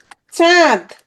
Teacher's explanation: কিছু বাতাস নাক দিয়ে বের হচ্ছে, তাহলে এটা কি? এটা হচ্ছে তোমার নাসিক্য